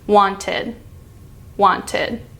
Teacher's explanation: tongue ends at the tip it doesn't come back down wanted it ends with your tongue at the roof of your mouth again against your teeth slightly there's not any hard pressure it's quite open